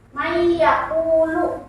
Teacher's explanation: Nun mati bertemu dengan ya. Mayyaqulu. Dia guna ya, jadi mayyaqulu masuk ke huruf yang kedua. Jadi nunnya nggak dibaca. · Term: idgham biguna